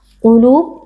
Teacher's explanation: qaf, huruf tebal, angkat pangkal lidah,